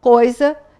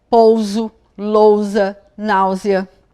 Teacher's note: são dois sons vocálicos que eu falo juntinho. Não tem como separá-los. Então, coisa, eu vou usar S, porque está depois de ditongo.